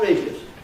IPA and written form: ˋreɪdjəs (radious)